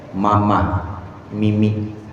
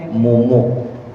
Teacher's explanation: M itu tempat keluarnya bibir atas sama bibir bawah dipaduin.